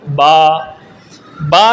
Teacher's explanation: با کا مخرج ہے دونوں ہونٹوں کے تر حصے سے